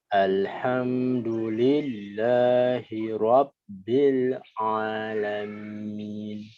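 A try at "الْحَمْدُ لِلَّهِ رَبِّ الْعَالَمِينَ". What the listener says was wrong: Mumtaz, barakallahu fiik.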